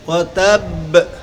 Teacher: তো অক্ফ অবস্থায় কলকলার হরফ তাসদীদ যুক্ত সাকিন হলে ওকে কলকলায় আকওয়া বলে। কলকলাটা খুব শক্ত হবে, সবল হবে।